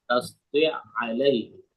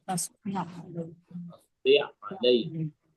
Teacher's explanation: ada di makhraj ain di wastul halqi di tengah tenggorokan, ya, karena agak dalam ingin kita sebut sehingga kadang penyebutannya kurang terbuka.